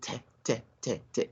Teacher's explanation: I'm not sensing or feeling any vibration of the vocal cords. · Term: voiceless consonant sound